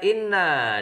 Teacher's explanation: dibaca gunnah karena ada nun tasdid, cara membacanya dengung 2 harokat